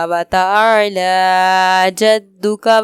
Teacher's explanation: وتعالی جدو کا میں دال میں کلکلا کریں گے۔